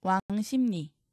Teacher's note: 기역, 비읍, 받침 뒤에서 리을이 니은으로 바뀌고 이 니은의 영향으로 다시 비읍이 미음으로 바뀝니다. 비음화가 두 번 일어났죠.